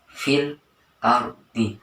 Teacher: ayat 11 pada lafaz F ARD fil Ardi Nah di situ terdapat R di sukun sebelumnya berupa fathah harakat fathah maka dibaca tebal atau tafkin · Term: tafkim